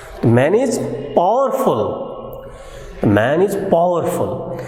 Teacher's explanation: rising tone is used to indicate the sarcastic statement of the speaker